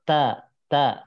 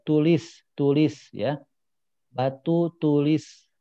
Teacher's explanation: Nah itu ujung lidahnya terasa lebih ke depan ujung lidahnya nih kalau di Pulau Jawa